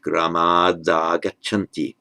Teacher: So the heroes, gramat, the ablative, so from the village, agachanti, they are coming, and the t, the final t, by Sandhi changes to a d, voices to a d before the following vowel